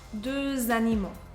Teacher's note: First, after the name Robert, because it's a name, and second, after the word et, just another rule. You have one required liaison between deux and animaux.